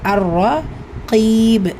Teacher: உச்சரிக்கணும் அர்ரா கைப் காஃப் கெஸ்ரா பெற்று வந்திருக்கு கூடவே யா சுக்குன் இது யா மத்தா உடைய நிலை இரண்டு ஹரக்கத் அளவு நீட்டம் கொடுத்து ஓதணும்